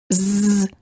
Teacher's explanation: you should feel a vibration in your vocal cords this is how you know that the z sound is voiced